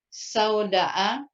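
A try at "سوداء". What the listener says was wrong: Bukan. Ini bukan tonasi pertanyaan. Lagi salah. Nah, uridu hakibatan ukhra sauda'a. Uridu hakibatan ukhra sauda'a.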